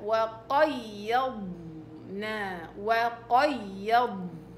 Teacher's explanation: الضاد رخاوة مفخمة مطبقة والياء عليها نبر